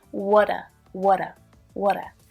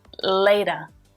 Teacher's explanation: can you hear that flap t there it sounds more like a d